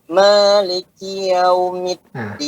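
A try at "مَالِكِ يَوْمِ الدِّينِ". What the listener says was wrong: Yaw itu enggak menyempurnakan sifat harakah. Ya, harus dibuka. Maliki yaw. Ya, harus terbuka ya. Maliki yaumiddin.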